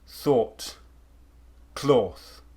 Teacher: most say rp speakers and many people from england will do additional lip rounding